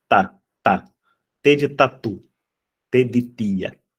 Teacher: tá sendo essa essa consoante dental surda